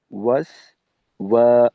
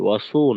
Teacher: সিনের উচ্চারণটা যখন আমাদের প্রকাশ হবে ওই সময়টাই ঠোঁটটা খোলা রেখে তারপর প্রকাশ করতে হবে, যেন গোল না থাকে , ওয়াসো যেন না হয়, ওয়াসো না, সিনকে আমাদের পর্যাপ্ত পরিমাণ